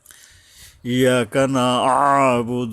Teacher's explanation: এই যে আইন গলা চেপে আদায় করতে হবে